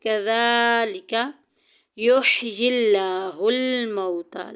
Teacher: لفظ اللہ کلام یہاں پہ باریک پڑھا جائے گا کیونکہ پیچھے زیر آ گئی